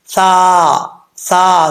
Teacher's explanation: है अम साल कुम यहां पर सा है बगैर सीटी वाला इसको बगैर सीटी के साथ पढ़ा जाएगा सीन के साथ नहीं मिलाना सा सा जुबान की नोक ऊपर वाले दांतो के निचले हिस्से · زبان کی نوک اوپر والے دانتوں کے نچلے حصے سے لگے تو یہ سا پڑھا جاتا ہے بغیر سیٹی کے